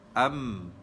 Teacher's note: Jadi kita tahu mim itu di bibir.